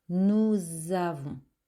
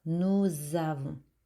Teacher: Nous, alors don't say nous avons. I want to hear the sound z between the nous et avons.